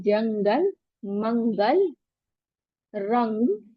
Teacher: दो जब भी नून साकिन और तनवीन के बाद इन 15 लेटर में से कोई लेटर आए तो इफा होता है। इफा में गुना करते हैं और नून साकिन की आवाज को छुपाते हैं। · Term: इक्फा